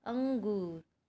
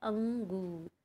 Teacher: जो आवाज़ है वो कहाँ से आ रही है, नाक से हमारे आ रही है। हवा जो है नाक से निकल रही है जब हम बोल रहे हैं अंगूर। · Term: अनुस्वार